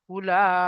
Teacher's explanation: হুরুফে মাদ্দার পরে হামজা একই শব্দের মধ্যে এসেছে, তাই এখানে মধ্যে মুত্তাসিল হবে, 2 থেকে 3 আলিফ পরিমাণ টান দিয়ে পড়তে হবে